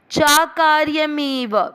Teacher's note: चा कार्यमेव, देखिए चा यानी च और अकार्य, अकार्य का अ और च की अ और अ मिलकर आ बन गया